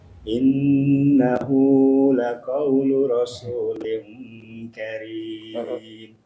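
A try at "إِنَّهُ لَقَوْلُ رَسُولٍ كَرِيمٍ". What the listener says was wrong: Hu-nya jangan kepanjangan. Innahu laqaulu afwan.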